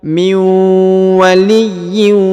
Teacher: nun sukun bertemu dengan wau bertasdid maka ditahan ditekan dua harakat dan didengungkan